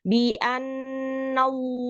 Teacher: lohnya itu di pangkal lidah yang di dalam itu didorong ke depan dan diangkat setebal-tebalnya